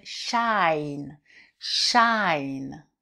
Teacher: Et maintenant, si je rajoute un E, ça va être une diphtongue, ça va être ouvert et ça va faire shine